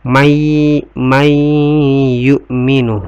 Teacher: Kemudian may yu'minu, nun sukun ketemu dengan ya. Hukum bacanya adalah idgham bigunnah. Idgham bigunnah, dibaca dengun ya. May yu'minu ya.